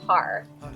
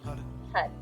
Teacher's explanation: a r but you don't say it like har say HUD the tip of the tongue is striking the roof of the mouth just behind the te HUD it makes almost like a h